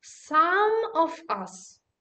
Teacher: That's some in the meaning of a certain quantity that is always stressed and therefore pronounced as some, like a stressed form. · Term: strong form